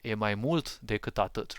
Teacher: the accent of the sentence falls on mult, which means a lot, right?